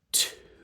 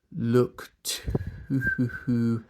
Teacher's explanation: it's sort of too, and my lips are tightening up towards the end.